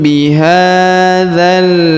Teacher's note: Maka tanwinnya berubah menjadi huruf mim, dibaca wa anta hillum bihadzal. Huruf ha dipanjangkan 2 harokat karena di atasnya terdapat alif kecil.